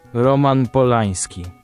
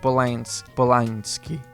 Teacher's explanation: N with an accent, this is a palatized N, a sound close to the Spanish ñ, but you also find it in onion.